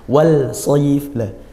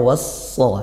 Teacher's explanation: dibaca idgham was-sha karena lam ta'rif bertemu huruf shad, tempatnya juga di lidah sehingga dekatnya makhraj. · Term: idgham syamsiyah